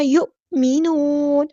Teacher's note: یؤمنون حمزہ ساکن پہ جھٹکا دینا